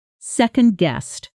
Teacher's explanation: Second-guessed often blends slightly at natural speed into second-guessed, with the D softening against the following consonant. Slow, second-guessed, fast, second-guessed. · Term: connected sound